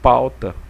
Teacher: o decrescente ele começa com uma vogal e posteriormente nós temos uma semi vogal